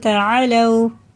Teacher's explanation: یہ واو ساکن سے پہلے زبر جب بھی آتا ہے یہ حرف لین میں سے ہوتا ہے، اسے ہمیں جلدی پڑھنا ہوتا ہے، کھینچ کے نہیں پڑھیں گے